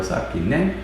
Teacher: it takes the opposite tone of the syllable that comes before it. So it's like sapki is, I think, the word for girl, sapki ne, and so it's like sapki ne, and then if there's and that means like it is a girl or something like that.